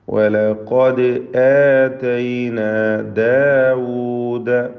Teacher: ദാലിന് ഖൽഖല സുഗ്റ നൽകുക